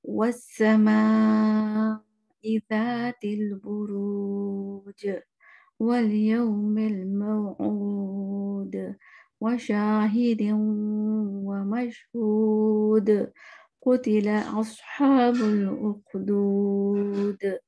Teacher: سب جگہ میں نے وقف کی صورت میں قلقلہ کیا